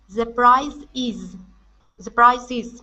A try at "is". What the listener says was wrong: Okay, so I is. Drop it just a little bit more. You're still saying e. Instead of e, it's I is.